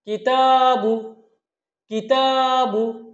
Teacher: কিতে কোনো টান নেই, তাতে এক আলিফ টান আছে, বুতে কোনো টান নেই।